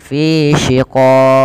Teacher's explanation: Qalqalah Kubro Karena Mati ketika akhir waqaf bacaan kita maka dia memantul